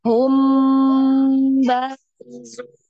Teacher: Nah, mimnya yang ditahan 2 harokat ya, didengung.